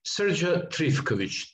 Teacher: Yes, Srdja Trifkovic. Trifkovic with the accent on the first syllable